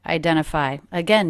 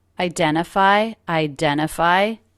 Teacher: No true T. The T is totally dropped.